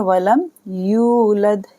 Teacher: लाम को मीम के साथ मिलाएंगे